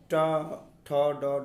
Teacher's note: जिन वर्णों के उच्चारण मूर्धा से अर्थात मुंह से होता है उन्हें मूर्धन्य वर्ण कहते हैं।